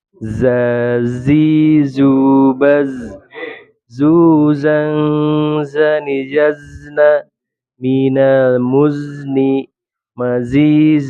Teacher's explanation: Kemudian ismat, pelafalan hurufnya tidak semudah izlak. Dan sofir, kuatnya suara karena keluar dari tempat yang sempit